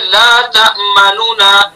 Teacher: दोनों नून को जाहिर करके पढ़ेंगे। पहला जो नून है उसको आहिस्ता पढ़ेंगे, यानी उसकी हरकत का तिहाई हिस्सा अदा करेंगे। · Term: इजहार